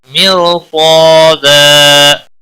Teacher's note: میر را ساکن سے پہلے زیر ہے تو یہ باریک ہونا چاہیے تھا لیکن نہیں، یہاں قاعدہ بدل ہے۔ را ساکن کے بعد جب بھی حروف مستعلیہ میں سے کوئی حرف آ جاتا ہے تو را ساکن پر پڑا جاتا ہے۔ صاد بھی حروف مستعلیہ میں سے ہے، پر پڑا جائے گا، اور اس کے ساتھ جو الف ہے یہ بھی پر پڑا جائے گا۔